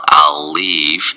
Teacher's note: And that's a hard one because you go right into the L, from the L to the other L